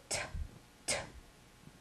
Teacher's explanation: To me, it felt like a fat puff of air · this tongue, might be hard to see, is tapping the top of the mouth, and when you make that T sound, a big puff of air comes out.